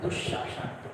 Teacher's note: यहाँ पे दोनों श का जब उच्चारण करेंगे तो मिलाते उच्चारण करना है, स संयुक्त हो चुका है तो थोड़ा सा स को दीर्घ करते हुए उच्चारण करेंगे